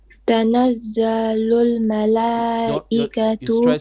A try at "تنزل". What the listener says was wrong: You stretch the za. You said za.